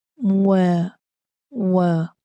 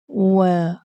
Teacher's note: Di sini waw adalah huruf yang nipis. Macam mana kita nak nipiskan? Kita kena muncungkan mulut kita. Wa. Okey, kalau kita tak muncung dia akan jadi tebal lah.